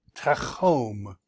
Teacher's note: it's a closed syllable, chom, and that's a long vowel, but it's accented.